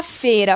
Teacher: a letra I quase não sai, funcionando como semivogal